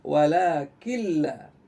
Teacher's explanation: pada kata walakin la yash'urun, pastikan nunnya tidak lagi terdengar. Walakin la, nggak ada lagi walakin la.